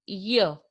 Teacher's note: Tongue makes contact with the hard palate on the roof of the mouth. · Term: palatal sound